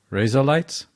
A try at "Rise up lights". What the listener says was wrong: Now you're saying razor lights. Rise up lights. Before it sounded like razor lights.